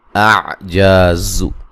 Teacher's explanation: ہوگا، اعجاز عین کو واضح نکالیں گے، جا الف مدہ ہے، زا کو زور سے سختی سے سیٹی سے ادا کریں گے